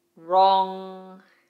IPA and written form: rɒŋ (Wrong)